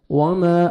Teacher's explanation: الف مدہ 1 سیکنڈ، میم کو آپ نے کھینچنا ہے